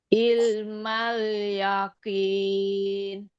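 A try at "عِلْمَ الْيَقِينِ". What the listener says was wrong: Qafnya tebalkan. Ilmal yaqini. Ainnya sedikit Bu. Ilmal yaqini. Nah, ainnya rasakan dari tengah tenggorokan. Bu- bukan bukan bibirnya yang dirubah Bu, afwan ya. Tetapi dari tenggorokan. latihannya di hamzah dulu.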